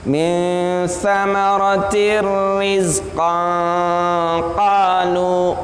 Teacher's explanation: Tanwin bertemu ro itu bukan gunnah, bukan samar-samar, tapi tanwinnya dimasukkan ke dalam ro, tapi tidak menggunakan gunnah, tidak menggunakan dengung. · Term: idgham bila gunnah